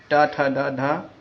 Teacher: मूर्धन्य यानी कि मूर्धा मुख की छत से